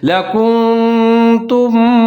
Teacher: یہاں پر یعنی کہ آواز کو ناک میں چھپا لیں گے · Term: اخفا